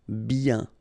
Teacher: when you get this combination of I, E, N, you get the sound yen, yen